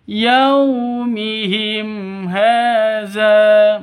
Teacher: mim mati bertemu dengan Ha jelas terang tidak boleh dipanjangkan tidak boleh didengungkan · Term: izhar syafawi, izhar safawi